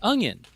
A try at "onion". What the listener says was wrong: That time it sounded like you put a G in it, like you said onion.